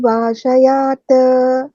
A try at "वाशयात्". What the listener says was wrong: वाशयात, त पूरा नहीं, वाशयात।